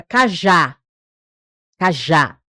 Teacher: A última sílaba é mais forte. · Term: oxítonas